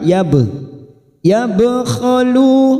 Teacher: ba sukun qalqalah sugroh karena mati asli di tengah kalimat namanya qalqalah sugroh, kita pantulkan yab, yabkhalu, khalu duma bertemu sukun